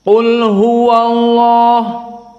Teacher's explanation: lafzul jalalah Allah di ayat yang pertama didahului oleh fathah maka dia mufakhamah